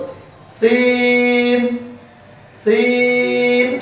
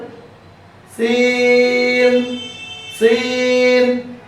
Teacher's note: এরপরে লক্ষ্য করুন সিন জিহ্বার আগা সামনের নিচে দুই দাঁতের আগার সঙ্গে লাগিয়ে সিন হরফটি উচ্চারিত হয়। সিন হরফটি পড়ার সময় আওয়াজ নরম হবে, চিকন হবে, নিচের দিকে দাবিত, হামস বাতাস চালু, আওয়াজও চালু। লক্ষ্য করুন সিন সিন, শক্ত যেন না হয় এবং মোটা যেন না হয়, লক্ষ্য রাখবেন সিন সিন।